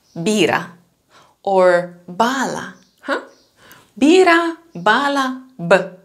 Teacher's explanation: Actually, we have two versions. At the beginning of the word, they're pronounced like b, like very strong and very voiced, like in the word bira or bala, huh?